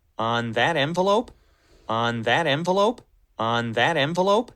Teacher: his intonation goes up at the end because it's a yes no question